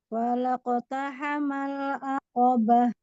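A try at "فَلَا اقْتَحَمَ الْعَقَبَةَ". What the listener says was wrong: Fa-nya berikan rokohnya. Falaqtahamal aqobah. Tahan sedikit lam sukunnya. Falaqtahamal aqobah.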